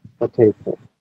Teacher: এরপরে ওরা টটাকে ওরা কি করতেছে, ঠ, শেষের টটাকে ওরা ঠ করতেছে। সো ব্রিটিশরা এভাবে উচ্চারণ করে potato. · প্রথম উচ্চারণ ওরা ফ করতেছে, ফ দুই ঠোঁট এক জায়গায় হবে, প্রেসার দিয়ে তারপর চাপতে হবে হ। এরপরে ওরা টটাকে ওরা কি করতেছে, ঠ, শেষের টটাকে ওরা ঠ করতেছে।